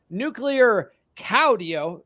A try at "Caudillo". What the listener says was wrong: More emphasis on the "iyo" on the last part.